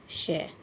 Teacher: इसको बोलते हैं तालव्य सकार। इसको तालु से बोला जाता है श। और फिर यह जो श है इसको मुर्धा से बोला जाता है।